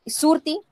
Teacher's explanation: encontramos una eliminación de vocales en surti por suerte